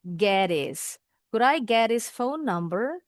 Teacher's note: H-nya dibuang jadi bunyinya is. Kita supaya bisa nyambung nih dengan bunyi t.